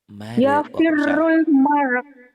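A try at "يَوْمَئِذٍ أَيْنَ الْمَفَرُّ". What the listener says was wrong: Mare. Ada hamzahnya kan ujungnya.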